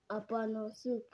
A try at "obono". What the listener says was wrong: Opono. Is it not opono? Say obono.